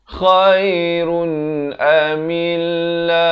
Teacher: Mutafarriquna khairun, khair di hujung kerongkong ini, khairun, dan masuk saja run di sini izhar halqi. Tanwin bertemu hamzah, jelaskan saja bunyi runnya tanpa dipanjangkan. Khairun amillahul, ha bari dhammah di atas lam.